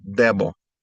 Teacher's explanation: Since the D is at the beginning of the word, it doesn't have a TH sound. It's a hard D, debo.